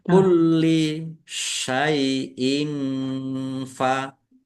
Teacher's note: lamnya dibaca double, ada tasdidnya, ditekan dan ditahan. Kulli kasroh tanwin bertemu dengan huruf fa, bacaan ikhfa, dibaca samar-samar.